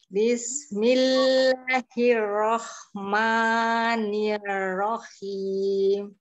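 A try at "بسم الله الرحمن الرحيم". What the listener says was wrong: Jangan terlalu buru-buru. Bismillahirrahmanirrahim. Coba di jangan terlalu ditekan di ini kurangi tekanannya.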